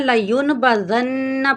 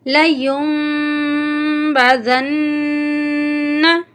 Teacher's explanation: نون کا صرف ہلکا سا ساؤنڈ آنا چاہیے